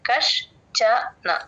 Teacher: క తర్వాత ష ని సగమే తీసుకుంటాం పొల్లు పెడతాం కష్ చన చ తో ల్యాండ్ అవ్వాలి ష కింద చ లు వచ్చినప్పుడు